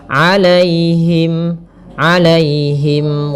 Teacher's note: Alaihim di sini ada ya sukun yang didahului dengan fathah. Ini kita namakan dengan bacaan lin. Maka lembut dalam pelafalannya